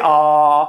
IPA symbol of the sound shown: ɑ